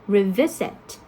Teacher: you have the first syllable stress, right? And if you add the prefix re into that to add more meaning, to mean you do something twice, the stress is still the same.